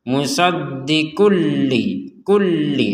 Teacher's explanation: ini tanwin bertemu lam dimasukkan tanpa dengungan